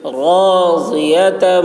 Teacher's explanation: ضاد کی آواز موٹی ہوگی